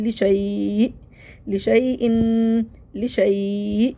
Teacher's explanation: और वक्फ़ की सूरत में 2 ज़ेर हज़फ हो जाएंगी और हमज़ा साकिन हो जाएगा। साकिन हमज़ा की आवाज़ मखरज में झटके के साथ रुकती है।